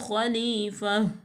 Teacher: صرف اونلی ہا پڑھی جائے گی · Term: ہائے ساکنہ